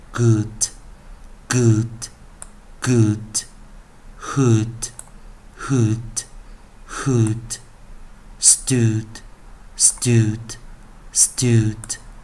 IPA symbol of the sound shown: ʊd